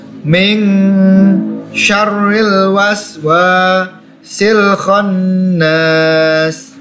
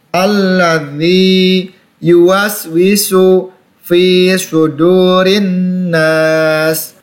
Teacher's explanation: Nun bertasydid, ditekan, berhadapan dengan alif sukun, dibaca panjang 2 harokat.